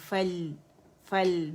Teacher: فا ہے لام ہے فل, اور لام توسط ہے تو آواز پارشلی چلے گی, فل فل درمیانی چلے گی.